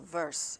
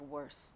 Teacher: issue with the pronunciation for example in Russian V and W there is really not much of a w sound in Russian so they'll say use V